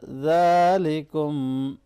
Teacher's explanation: ज़ाल को नरमी से पढ़ना है और खड़ी ज़बर है, इसको खींचेंगे।